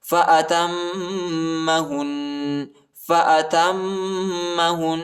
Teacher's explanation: تا کو میم کے ساتھ ملائیں گے اور غنہ کریں گے، ٹھیک ہے، میم پر شد آئے ہے ، اور ہا کو نون کے ساتھ ملائیں گے اور غنہ